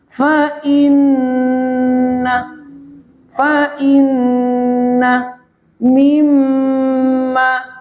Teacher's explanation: Mengeluarkan suaranya nun atau mim dari pangkal hidung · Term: dengung